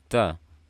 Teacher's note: Ta bersifat hamas, jadi jangan lupa pastikan terdengar suara aliran nafasnya.